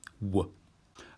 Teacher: It's frequently pronounced as a V, but for the purposes of this course, it's going to be like a W.